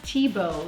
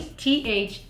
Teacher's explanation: But It's spelled Thiebaud because the French don't say the ending of the word if it's consonant. And often they make TH sound like just a T, okay, instead of a th, okay?